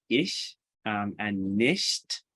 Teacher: the voiceless palatal fricative in words like ish and nist so you're making it in that same spot that you make